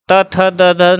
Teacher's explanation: क च ट त, त थ द ध न, ये दांत के स्पर्श से बोले जाते हैं, यानी दंत व्यंजन हो गए